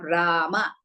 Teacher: short vowels, and long vowels, that is in case of Rama. Ra is Dirgha, Ma is Hrisva.